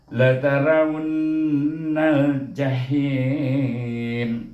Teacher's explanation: nampak nun bertasydid, mim bertasydid mesti didengungkan 2 harakah kadarnya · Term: wajibul gunnah